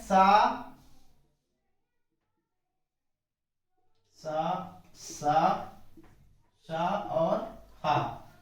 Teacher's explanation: उच्चारण करते समय मुख में वायु घर्षण करती है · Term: संघर्षी व्यंजन